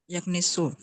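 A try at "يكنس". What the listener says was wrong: Yaknus, bukan yaknis tuh kan. Emang Ainul Fili agak susah Bu ya. Yaknus ya. Yaknusu.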